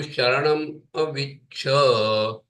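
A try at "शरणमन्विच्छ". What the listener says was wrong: No. That ma, I think you are reading it as half matra yim. It is not yim, it is ma. You should say Sharanaman Vicha. Sha.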